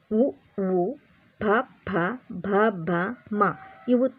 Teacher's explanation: ತುಟಿಯ ಸಹಾಯದಿಂದ ಹುಟ್ಟುವುದರಿಂದ ಇವನ್ನು ಓಷ್ಟ್ಯಗಳೆಂದು ಕರೆಯುತ್ತೇವೆ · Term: ಓಷ್ಟ್ಯ ಅಕ್ಷರಗಳು